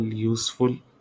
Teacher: useful is stressed on the first syllable